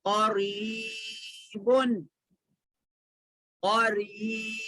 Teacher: را پہ زیر ہے تو را کو تھوڑا باریک پڑھنا